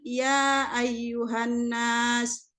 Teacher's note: Kalau mat dibaca panjang. Ya ayyuhan nas, itu mat panjang. Mat jaiz munfasil, dibaca 5 harkat.